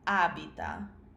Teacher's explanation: abitare is abita, and it has the stress on the first syllable